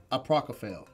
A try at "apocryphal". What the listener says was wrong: You added some R's in there. Aprocophale? Apocryphal. It is apocryphal.